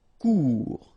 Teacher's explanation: final T not pronounced